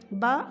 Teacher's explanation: دونوں ہونٹوں کی تری والے حصے سے مل کر ادا ہوتا ہے